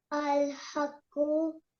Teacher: Qaf, which is color coded in red, as we can see at the top over here, color coded letters should be pronounced with a thick and heavy sound